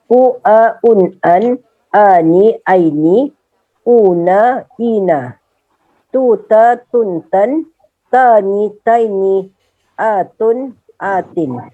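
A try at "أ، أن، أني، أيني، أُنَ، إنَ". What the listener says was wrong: Nah, begitu. Bagus, selamat, Mumtaz.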